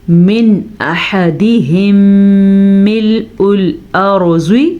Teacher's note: ہا کے مخرج کا دھیان رکھنا ہے, ہا کے مخرج کا دھیان رکھنا ہے. دونوں میم اکٹھے آ گئے تو میم پہ غنہ کرنا ہے